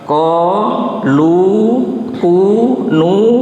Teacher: ini adalah bacaan mad tabi'i. Jadi panjang biasa hanya satu alif.